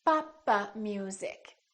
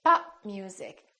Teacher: release my lips I said pop I didn't say pop so when we release the stop it sounds like we're adding an extra syllable Papa music it sounds almost like four syllables Papa music instead